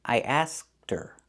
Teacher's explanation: the H is silent in her because it's not an important word.